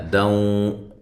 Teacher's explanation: یہ نون تنوین کا ادغام مع الغنہ ہے